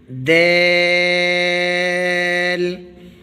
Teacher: جس جگہ سے ہم نے تے کو پڑھا تھا اسی جگہ سے دیل پڑھیں گے۔ زبان کی نوک اوپر والے سامنے کے دانتوں کی جڑ میں لگانی ہے اور بریک آواز نکالنی ہے